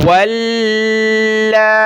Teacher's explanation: واو کو لام کے ساتھ ملانا ہے اور لام کے اوپر کھڑا زبر مد ہے تو اس کو کھینچنا ہے، اور تشدید ہے، یہ تشدید کی وجہ سے ہم نے لام کو سخت کرنا ہے۔